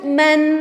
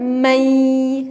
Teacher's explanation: huruf 2 seolah-olah menjadi satu huruf karena nun-nya dimasukkan jadi nun-nya itu enggak terdengar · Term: idghom